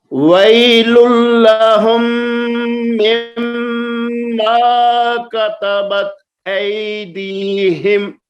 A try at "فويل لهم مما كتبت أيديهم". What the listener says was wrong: یہ پھر پڑھیے آپ فا کو واو پڑھ گئے ہیں، فا چھوڑ گئے ہیں، بلکہ ایک دفعہ پھر پڑھیے فویل لہم.